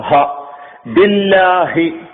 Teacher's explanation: ഹ എന്ന് പറയുന്ന അക്ഷരം തൊണ്ടയിൽ നിന്ന് ഉത്ഭവിക്കുന്നതാണ് തൊണ്ടയുടെ ഏറ്റവും അടിഭാഗത്തു നിന്നാണ് അത് ഉത്ഭവിക്കുന്നത്